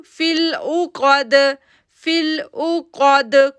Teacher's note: کاف heavy letter ہے، دال پہ جو ہے وہ کلکلا ساؤنڈ بن رہا ہے